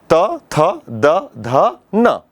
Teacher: ली वर्ण, त वर्ग, त, थ, द, ध, न और ल और स, इतने वर्णों के उच्चारण जब हम करते हैं तो हमारी जो जिह्वा है, हमारी जो जीभ है, वो दांतों से टकराती है, दांतों को स्पर्श करती है